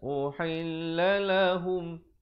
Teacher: Ha kalau berada di depan bunyi hu, bukan bunyi ho. Jadi bila bertemu mim jadi hum.